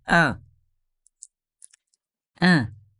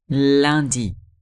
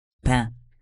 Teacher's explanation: É um som levemente nasal, mas você faz um sorriso.